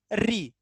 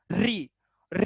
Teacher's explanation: तो जीभ की आगे की जो टोन है, वो नोक, वो आपके दांतों के ऊपर दरदरे भाग से टकरा रही होगी।